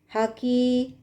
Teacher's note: Ha ada di wasatul halq dan kaf ada di aqsal lisan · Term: mutabaidain kabir